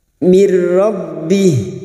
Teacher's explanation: nun sukun atau tanwin yang bertemu dengan huruf lam dan ro namanya bacaan Idam Bil gunah hanya masuk tanpa mendengung tanpa ditahan lama-lama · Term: idgham bila guna